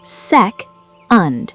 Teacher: The new ending is second. Stress the first syllable.